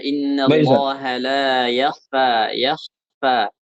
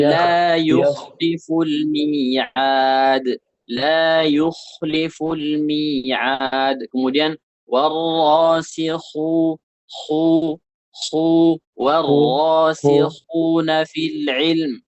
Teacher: Itu suara kha itu halus kemudian mengalir. Nafas mengalir.